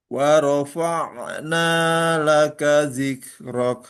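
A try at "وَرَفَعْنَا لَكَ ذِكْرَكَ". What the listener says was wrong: Ya, tadi hampir mantul ya. Hati-hati jangan sampai mantul ya.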